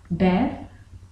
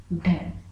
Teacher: आप इन दोनों का उच्चारण करके देखेंगे कि इन दोनों का उच्चारण करते समय पहले जीभ ऊपर उठी है, फिर मूर्धा को स्पर्श किया और फिर झटके से नीचे आते हैं, इस प्रकार के व्यंजन उच्छिप्त व्यंजन कहलाते हैं। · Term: उत्क्षिप्त व्यंजन